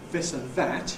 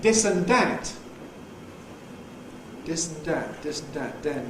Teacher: in London where you have the voiced dental fricative / ð / at the beginning of a word, ‘this, that, the, then’, it tends to be replaced by a plosive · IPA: [ ˈdɪs ən ˈdæt ]